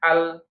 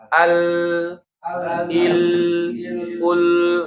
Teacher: jadi lam ini punya sifat bainiyah, maka ketika dia disukunkan jangan ditekan dan al. Kalau al bacanya gitu berarti dia sifatnya syiddah ya, tapi al, il, ul gitu ya.